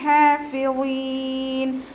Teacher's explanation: ഇത്ബാക്കിൻ്റെ അക്ഷരം കൂടിയാണ്. കെസ്റയായാലും നല്ലോണം നാവിൻ്റെ ബേക്ക് മുകളിലേക്ക് ഉയർത്തി കൊടുക്കണം. ഹാഫിളീൻ അവസാനത്തിൽ മദ് ആരിദിൽ വഖഫ് ചെയ്യുമ്പോൾ 2-4-6 ഹർക്കത്ത് നീട്ടി വഖഫ് ചെയ്യും. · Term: തഫ്ഹീം